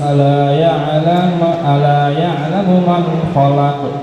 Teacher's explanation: Khalaq harus jelaskan qalqalahnya, karena qalqalah itu beda dari huruf yang lain ya.